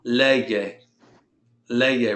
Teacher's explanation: Notice when I'm pronouncing lee, I pronounce both vowels. That's a 2-syllable word, and I'm putting the stress over the second to last syllable, which is that one right there.